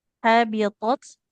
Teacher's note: tak sukunnya jangan lupa aliran nafasnya